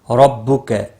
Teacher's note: را پور پڑا جائے گا زبر کی وجہ سے